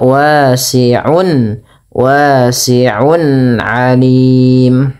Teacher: Izhar artinya jelas, halqi dikeluarkan dari tenggorokan. Berarti cara membaca ainnya itu diperjelas suara nunnya atau suara tanwinnya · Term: izhar halqi